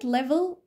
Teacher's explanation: كلمه ليفل فيها اتنين ال في البدايه وفي الاخر اللي في البدايه ده كلير لان قراته بوضوح اما اللي في الاخر كان دارك